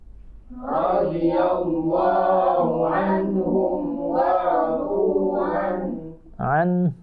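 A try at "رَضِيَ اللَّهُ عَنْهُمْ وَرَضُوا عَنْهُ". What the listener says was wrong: Ha-nya tetap dibaca ya. An.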